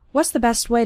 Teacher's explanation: what's it sounds more like wasps what's the best way and the T at the end of best also kind of disappears